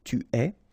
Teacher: you get this ES, but then phonetically it's est, alright, quite open, tu es. Il est, exactly the same sound as we had previously, okay, so just remember that you write it like that, but then phonetically it goes like est, elle est.